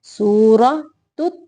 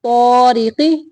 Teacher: سورۃ تا باریک اور تو موٹا طارق